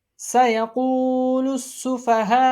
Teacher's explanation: مد متصل ہو رہی ہے، اس کو 3 انگلی کے برابر کھینچ کے پڑھیں گے